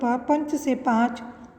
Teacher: यह हिंदी की अल्प प्राण अघोष स्पर्श ओष्ठ ध्वनि है। इसका विकास प्राचीन भारतीय आर्य भाषा की प, प्र, प, म, प आदि ध्वनियों से हुआ है।